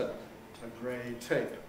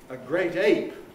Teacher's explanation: We sometimes play around with a phrase like a grey tape, which is a tape coloured grey, a grey tape. And you hear the aspiration of the t